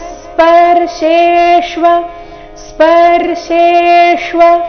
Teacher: ಶೆ ಇಲ್ಲಿ ತಾಲವ್ಯ ಶೆ ಶ್ವ ನಲ್ಲಿ ಅರ್ಧ ಮೂರ್ಧನ್ಯ ಶೆ ಪೂರ್ತಿ ವ ಇದೆ